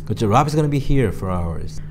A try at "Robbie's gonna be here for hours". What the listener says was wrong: 그렇죠.